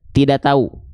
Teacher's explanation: saya yakin dominan kita bilang tidak tahu itu nggak pakai k, nggak pakai h-nya